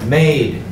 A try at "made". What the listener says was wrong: M-A-D-E. Made. Long A sound, not mad. Long A sound with the E on the end.